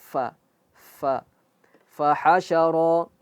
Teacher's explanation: Jelas fa itu mengalir nafas, mengalir aliran nafas. Hembusannya keluar.